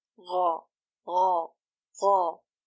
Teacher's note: Breath shouldn't flow when it's pronounced. You should not force air to flow when pronouncing it. Doing so will change its sound to Kha.